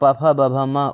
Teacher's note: उ और प, फ, ब, भ, म ओष्ठ से।